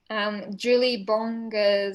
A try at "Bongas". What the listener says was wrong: Okay, it's soft G, but that's okay.